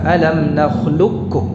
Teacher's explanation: bil idghamil kamil, idghamnya kamil, jadi langsung ke kaf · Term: idgham kamil